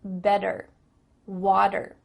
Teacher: in American English a t that's between two vowel sounds it doesn't always have to be a vowel but between two vowel sounds is going to change to a d